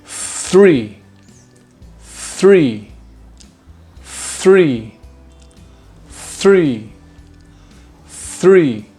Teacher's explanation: immediately after making the TH sound, you need to pull your tongue back quickly and roll it into the roof of your mouth